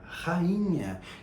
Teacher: eu tenho o A numa sílaba e o I na outra sílaba. Na palavra rainha, eu tenho o A numa sílaba e o I na outra sílaba, tá? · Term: hiato